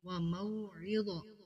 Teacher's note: عین کو واضح کرنا ہے اور آگے غا ہے یہ حروف مستعلیہ میں سے ہے